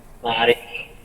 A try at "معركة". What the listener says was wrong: Ma'rakah, bukan ma'rikah ya, ma'rakah.